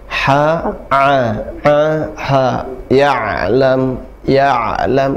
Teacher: suara ain ada di tenggorokan ya. Dan dia di samping huruf ha.